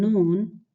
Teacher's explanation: you're using the tip of the tongue just behind the gums of your front teeth, your incisors.